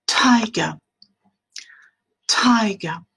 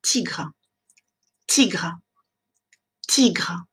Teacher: va avoir ce qu'on appelle une aspiration en prononçant ce son T. C'est-à-dire on va avoir un petit souffle. Et pour bien montrer que ce petit souffle est présent, vous pouvez faire cet exercice avec la feuille. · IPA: [ˈtaɪɡə]